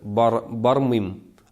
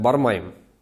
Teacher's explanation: у нас же говорят в татарском языке «ый», а в мензелинском говоре мы используем «ай», например, «бармым», они говорят «бармаем», «аим».